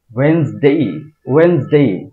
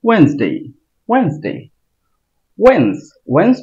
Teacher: যখন বলবো মনে হবে যে উপরের দিকে যাচ্ছে আওয়াজটা। ওয়েনসডে ওয়েনসডে ওয়েনসডে। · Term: চাপ